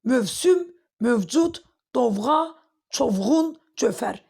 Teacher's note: Yəni v orada düşmür. Uzanma yoxdur. · Bunların hamısında tələffüzdə indi səs düşümü baş vermir.